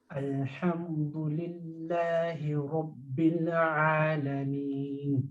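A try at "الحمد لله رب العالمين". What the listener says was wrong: So Rabbil Alameen. Don't bounce the lamb.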